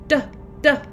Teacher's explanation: our tongue is reaching up behind our front teeth